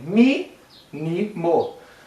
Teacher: Mínimo tem mínimo. Ou seja, a antepenúltima sílaba, a terceira de trás para frente, é a mais forte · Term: proparoxítonas